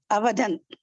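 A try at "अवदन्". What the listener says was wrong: Avadan. Well done.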